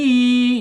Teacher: Makhrajnya ada di tenggorokan bawah ya.